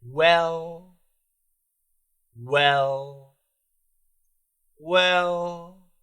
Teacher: of my tongue is not touching but what's happening is is the sides of my tongue is touching and that's kind of giving you that L but the front is just hanging there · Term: lazy L